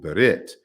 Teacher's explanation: the r is maintained when followed by a voiceless stop